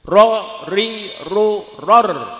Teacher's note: Ro itu ada takrirnya, bergetarnya ujung lidah. Tapi jangan kebanyakan ya.